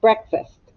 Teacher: You hear, I think it sounds like a short U, breakfast. Some of you may live in a part of the country where it sounds like a short E, but here in Kansas, short U.